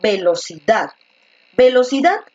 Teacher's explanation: encaja mejor cuando pronuncias con fuerza la última sílaba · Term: mayor fuerza de voz